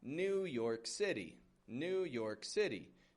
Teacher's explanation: Strong weak, New York City, with a flap T in that word city.